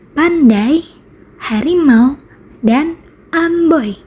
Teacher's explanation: Jadi, diftong adalah gabungan dua vokal yang diucapkan dalam satu suku kata. Saat mengucapkannya, lidah bergerak dari satu posisi vokal ke posisi lain tanpa jedah